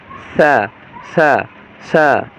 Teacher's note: সায়ের হালকা বাতাস বের হবে আর হালকা জিহ্বাটা হালকা উপরের দুই দাঁতে লাগবে